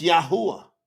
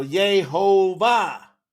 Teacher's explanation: See they changed the u from a u to a v sound. There's no V's in Hebrew.